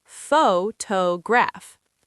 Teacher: The stress is on the first syllable, photograph. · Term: word stress